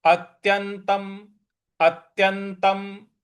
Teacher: और त्यंतम, आधा जो न है उस पर भी हमको आघात देना है, और उसके त के ऊपर जो अनुस्वार है उसका म में उच्चारण हमको करना है